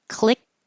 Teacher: Technically, the ED will sound like a T, clicked, but you're not going to release the airflow, so you don't hear anything. Click. My tongue goes to the T position.